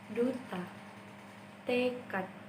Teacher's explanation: Apabila terdapat di akhir suku kata, maka D tersebut akan diucapkan dengan et.